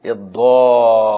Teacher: شدد الضاد، شدد اللام، المد 6 حركات